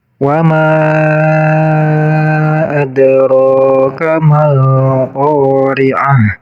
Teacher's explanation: ma panjangnya bisa sampai 5 harokat karena ini menjadi majaiz munfasil.